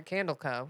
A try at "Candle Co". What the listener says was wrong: Because when you just said it, it almost sounded like you said Candles Company. it sounds like Campbell Soup.